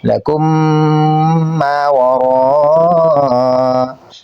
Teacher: پارہ نمبر 5 کے اندر سورۃ النساء میں یہ کچھ مقامات ہیں، یہاں پر ہم نے قاعدہ کو سمجھ کر ٹھیک ادائیگی کرنی ہے، غلط نہیں پڑھنا، یعنی لکم ما وراء ایسے نہیں پڑھیں گے، بلکہ یہاں پہ میم کا میم ساکن اور آگے میم ہے، تو یہاں پر میم کا میم میں ادغام کریں گے، ساتھ غنہ بھی کریں گے